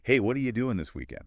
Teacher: What are you becomes that wa sound and doing often becomes doing that final G sound gets dropped which is really common in informal speech